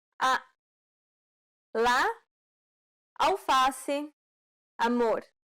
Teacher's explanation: This vowel sound is considered an open A sound because the jaw is low and the mouth is wide and open.